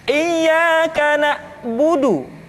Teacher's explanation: ketika huruf Ain disukun, maka suara kita tidak boleh mati